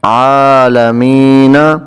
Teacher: تو نون کو ہم ساکن کریں گے، وقف کریں گے، تو یہ بن جائے گا عالمین